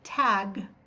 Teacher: even though we have a very short sound at the end of the D and the g they are voice sounds because you can feel a little bit of vibration